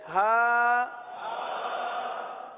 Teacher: ہا، ہا. حلق کے آخر والے حصے سے.